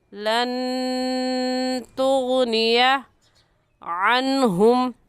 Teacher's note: लन के नून साकिन पर हम गुन्ना करेंगे क्योंकि नून साकिन के बाद हुरूफ़ हल्की जो कि 6 हैं, हमज़ा हा आइन हा गैन खा में से कोई लफ्ज़ नहीं है, इसलिए गुन्ना करके पढ़ेंगे।